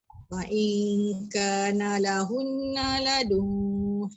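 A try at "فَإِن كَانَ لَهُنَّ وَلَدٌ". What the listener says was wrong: Waladun tak tertinggal tak? Wah macam tak dengar wah. Lahunna waladun. Ke laju sangat agaknya. Saya dengar macam lahunna ladun.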